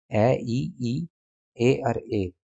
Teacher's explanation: जिन भी स्वरों को जीभ के अगले हिस्से से बोला जाएगा तो उन्हे अग्र स्वर बोलते हैं